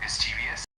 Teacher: it's pronounced with the emphasis on the miss part and the e is a bit softer